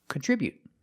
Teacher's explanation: put the stress on the second syllable.